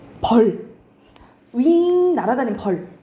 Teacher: 날아다니는 윙 나는 벌이 길게 발음해요